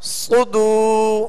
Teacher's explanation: صاد کو پر بھی پڑھنا ہے اور صاد کو سیٹی کی آواز میں پڑھنا ہے. صدو، ہونٹوں کو گول کریں گے تو پیش صحیح ادا ہوگا.